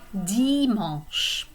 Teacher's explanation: So this AN is a nasal vowel, and that's going to be pronounced like dimanche.